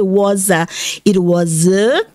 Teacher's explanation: O S com A vira Z, was a.